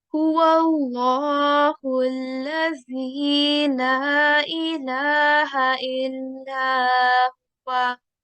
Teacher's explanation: This letter of Lam is in red, and you must have noticed that I pronounce this with a thick and heavy sound. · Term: Lamul Jalala